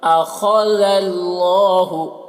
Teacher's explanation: اللہ کو پر پڑھیں گے کیونکہ اللہ کا لام سے پہلے زبر ہے